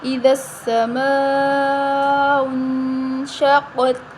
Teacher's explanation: الف کے اوپر مد ہے بڑی مد ہے اس کو 5 الف کے برابر لمبا کریں گے